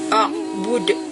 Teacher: Nah, ain harus dibaca jelas ya, jangan sampai hilang. Kemudian dal sukun di akhir itu adalah qalqalah kubro, jadi harus dibaca mantul